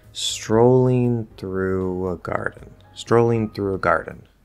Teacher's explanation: through is a function word grammar word it's not stressed it's a big word but it's not stressed strolling through a